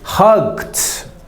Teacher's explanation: apenas o som do D. Então, no, não pronuncia a sílaba extra.